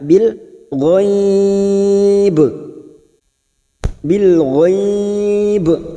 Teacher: Mad layin kita melunakkan sambil kita mewakafkan